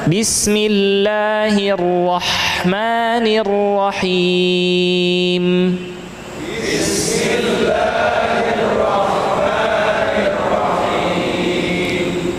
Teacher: Ha-nya atau makhrajnya, tempat keluar huruf ha adalah tenggorokan bagian tengah.